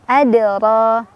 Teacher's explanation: Kemudian cara bacanya adalah dipantulkan, pantulannya tipis aja, kecil. Adra. Ro-nya dibaca secara tafkhim karena ro berbaris fathah, jadi ditebalkan. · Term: qalqalah sura